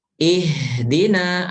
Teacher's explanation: Jangan dari dada. Kalau dada itu sodar. Tapi dari tenggorokan bawah. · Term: Huruf H